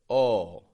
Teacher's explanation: this has the lips rounded the lips are rounded oh and kind of tense on the sides oh the second